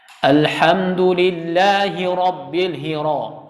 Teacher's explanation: Kalau yang tidak bertasydid pada huruf ra, maka dia fasihnya itu 2 getaran, 3 getaran.